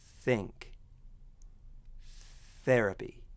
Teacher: All that's happening is air is being pushed past the tip of the tongue and the upper teeth. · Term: unvoiced consonant